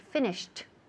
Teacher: For example, finish, okay, el verbo to finish, cuando pasamos al pasado, ese ed, el último sonido, it sounds like a T